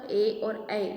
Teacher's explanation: ए और ऐ ये जो है स्वर हम कंठ के और तालु के माध्यम से बोलते हैं